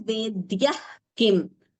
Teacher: Visarga followed by Ka. It becomes a Jihva Muliya.